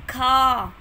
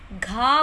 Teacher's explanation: हमारे मुख से निकलने वाली वायु की मात्रा जो है वो अधिक थी, ज़्यादा वायु निकली है। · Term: महाप्राण